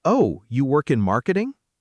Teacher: you confirm what they said with a gentle rise, showing interest.